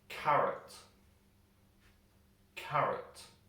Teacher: we put the stress of the word in the a ca and the o we kind of jump over · And the O, we kind of jump over. We don't pronounce it. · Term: schwa sound